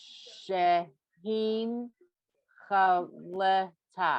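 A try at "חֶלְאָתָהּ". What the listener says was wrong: No, not le. Chalta.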